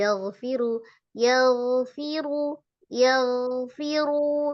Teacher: Ghainnya roghah, tidak dipantulkan, tidak dinabar. Yaghfiru disejajarkan dengan jangan naik supaya ghainnya bisa diroghahkan.